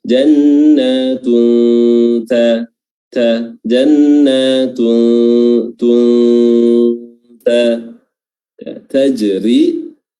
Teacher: huruf jim di sini qalqalah sughrah ya karena berada di pertengahan bacaan. Ra tarqiq dibaca tipis karena berharakat kasrah, dan setelahnya ini ada mad tabi'i 2 harakat.